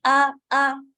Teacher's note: الف حمزہ اسٹرانگ تھی ہمیشہ سے، اور ابھی بھی آپ کو الف نہ کہہ کے الف آ. حمزہ کے لیے آپ حلق کو چپک کر کے دوبارہ کھولنے والا پارٹ جو ہے اتنا وہ سیکھیں، تب جا کے آ یہ والی ساؤنڈ آتی ہے، ورنہ ہم آ کہہ رہے ہوتے ہیں.